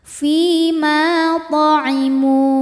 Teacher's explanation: Sebab ada alif didahului harokat fathah, maka mimnya panjang 2 harokat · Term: mad tabi'i zahiri